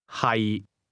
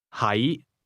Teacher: 係 The difference is that to be is pronounced with a low, level tone, and to be located is pronounced with a mid-rising tone.